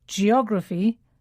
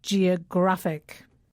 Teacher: the stress falls on the penultimate syllable that's the syllable just before the last one